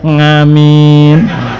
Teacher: Bapak dan kakek saya membaca A-nya biasanya jadi Ng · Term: pengaruh dialek kedaerahan